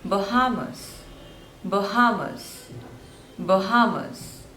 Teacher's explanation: so there are three syllables and stress is on the second one